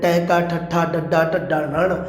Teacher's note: ਇਹ ਮੂਰ ਧੁਨੀ ਹੈ, ਉਲਟ ਜੀਬੀ ਧੁਨੀ ਆਪਾਂ ਜਿਨ੍ਹਾਂ ਨੂੰ ਕਹਿ ਦਿੰਦੇ ਹਾਂ